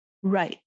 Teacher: the T is unreleased or stop